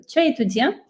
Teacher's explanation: Entonces, muy parecido con el español, sí, realmente no hay nada que hacer, salvo si adicionar el punto de pregunta al final de la oración y levantar un poquito el tono de voz al final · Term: la entonación